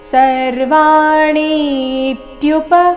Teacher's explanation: ಸರ್ವಾಣಿ ಇಲ್ಲಿ ಣಿ ದೀರ್ಘ ಬಂದು ಸೌಮ್ಯ ಆಘಾತ ಮುಂದೆ ಸಂಯುಕ್ತ ಅಕ್ಷರ ಬಂದ ಕಾರಣ ಸರ್ವಾಣಿ ಇತ್ಯುಪ ಧಾರ ಯ ಧ ಮಹಾಪ್ರಾಣ